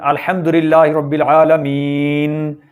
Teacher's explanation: مین کا جو نون ہے اس پر چونکہ زبر ہے لہٰذا اس کو ہم نے وقف کی حالت میں ساکن کر دینا ہے، رک جانا ہے، تو اس حالت میں ہم نے اس کو جزم بنا دینا نون کی زبر کو۔